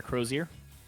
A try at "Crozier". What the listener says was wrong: You're adding a extra S, by the way. It's Crozier.